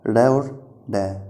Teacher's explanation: जो ट वर्ग है उसी को ही हम मूर्धन्य व्यंजन कहते हैं, क्योंकि इनके उच्चारण के समय जो वायु है वो मूर्धन्य या मूर्धा से टकराकर बाहर निकलती है।